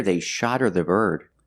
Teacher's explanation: the T changes to a fast D because the H in her is silent because her is not a stressed word